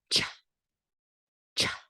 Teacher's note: the CH is more like a burst and your teeth come apart